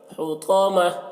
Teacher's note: ہا کو حلق سے ادا کریں گے، تو کو موٹا کر کے پڑھیں گے